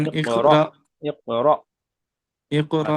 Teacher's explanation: হামজা সাকিনকে একটু ঝাটকা কিংবা ধাক্কা দিয়ে পড়তে হয়।